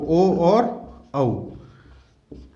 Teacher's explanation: इनका उच्चारण स्थान होता है कंठ और ओष्ठ से मिलकर के